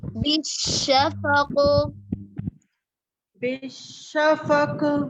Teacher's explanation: कॉफ बिल्कुल वाज़े ही नहीं है, कॉफ साकिन में शिद्दा होता है, शिद्दा में आवाज मुकम्मल तौर पर बंद हो जाती है, इसलिए उस कॉफ को वाज़े करने के लिए उसमें कलकला होगा